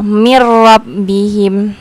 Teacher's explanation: nun mati atau tanwin bertemu dengan salah satu huruf idigambilaguna maka cara membacanya dileburkan tanpa berdengung tidak berdengung